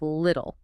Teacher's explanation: >> Ah, the flacked T. When a T or a double T sits between two vowel sounds, it changes. It becomes this quick soft sound.